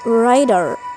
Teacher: The production of T in the word rider becomes D. This is called flap.